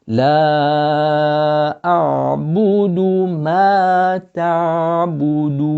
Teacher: The hamza first from the bottom of the throat, then you got the ayn.